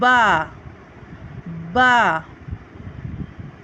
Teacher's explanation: बा को हम दोनों होठों के तर हिस्से से अदा करते हैं